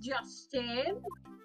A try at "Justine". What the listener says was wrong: Justine. There's a T on the end. Justin, not Justine.